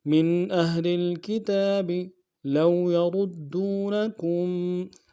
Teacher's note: واو لین بغیر کھینچے پڑیں گے